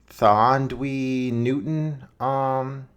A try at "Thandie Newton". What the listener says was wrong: Thandie Newton? Yeah, there's no W in there for my understanding like you have here in the script, brother. I'm pretty sure it's Thandie Newton.